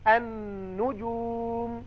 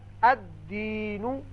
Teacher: لکھنے میں یہ لام آئے گا لیکن پڑھنے میں نہیں آئے گا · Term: حروف شمسی